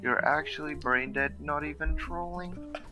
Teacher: It's semi-monotone, it has a late pitch flex, and the structure vaguely follows a trochaic tetrameter. The intonation of the sentences are usually monotone, but follows a formula where the beginning starts low and the ending is high-pitched. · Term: Valorant accent